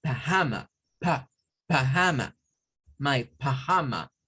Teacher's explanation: otros lo dicen como pajama, pajama, my pajama, con el schwa